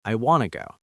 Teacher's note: Remember, the T and to can blend.